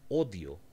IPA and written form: odio (odio)